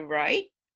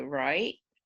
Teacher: you could have the dominant rising tone, so right, or the non-dominant rising tone